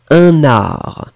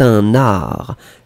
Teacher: je fais même la liaison entre un et art